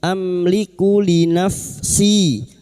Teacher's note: Am, mim sukun ketemu lam, izhar syafawi. Mim sukun dibaca dengan jelas tanpa nasalisasi